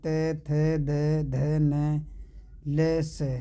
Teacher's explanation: दंत व्यंजन दोस्तों दांतों से जो बोले जाते हैं